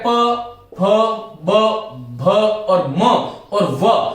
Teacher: वर्ण ऐसे हैं हिंदी में जिसको हम औष्ठ से बोलते हैं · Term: औष्ठ्य